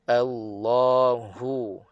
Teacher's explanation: Pastikan setiap ha itu anginnya dinyatakan. Tidak tenggelam. Tidak tersembunyi. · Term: angin ha